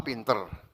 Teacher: bunyi vokal A pada kata pintar diucapkan menjadi E sehingga terdengar pintar dan tidak baku.